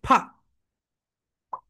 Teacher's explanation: উপরের দাঁত নিচের ঠোঁটের সঙ্গে টাচ করো